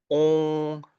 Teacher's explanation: air needs to pass through your nose, meaning that pathway is not blocked. But you also need to let air pass through your mouth. So it's both ways. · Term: nasal vowel